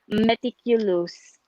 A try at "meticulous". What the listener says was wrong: Meticulous. Where's the stress? Meticulous. Meticulous. Stress on the T. Yeah. The first time the stress pattern was a bit off.